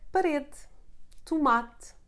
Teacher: E sounding like U, the muted sound of E. It happens at the end of the words when not in the tonic syllable, like parede, tomate, or the preposition de. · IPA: ɨ